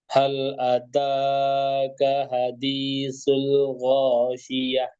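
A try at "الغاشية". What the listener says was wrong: Shi, ya. Sh, tebalkan.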